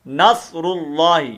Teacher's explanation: یہ لفظ اللہ کا لام جو ہے نا، اس کو پر کر کے پڑھنا ہے